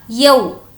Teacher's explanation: یہاں پر ہے واولین اسی لیے اس کو کھینچیں گے نہیں